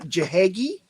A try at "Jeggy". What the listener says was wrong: Jeggy. I think the H has to be silent.